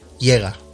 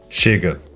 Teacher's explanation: Portuguese has some consonants that don't have an equivalent in Spanish. First, a sh sound spelled with CH or with X.